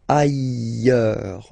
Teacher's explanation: final S not pronounced, and then you've got this y sound